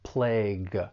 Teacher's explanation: When it comes to pronunciation, the spelling and pronunciation don't really look like they match, but that final G-U-E, it's going to be pronounced with an aspirated G sound